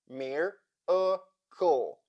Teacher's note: We have three syllables, the first of which is stressed and closed. So the letter I sounds like E, but the second and third syllables unstressed, and accordingly the letter A, for example, in the second syllable, changes its sound and sounds like schwa. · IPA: ə